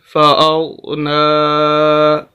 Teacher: کھڑی زبر ہے، لمبا کریں گے نون کو